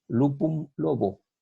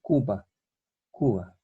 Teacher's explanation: En romance español, esta U cerrada queda U, y esta es sorda, igual que la T. La sorda intervocálica sonoriza. En este caso, la P sonoriza en B.